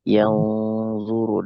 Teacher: Dengung. Itu ikhfa. Nun sukun bertemu dengan dha.